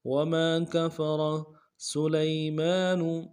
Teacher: سین کی سیٹی باریک ہوگی، لام کو یا کے سامنے لانا ہے، یا لین بغیر کھینچے پڑیں گے۔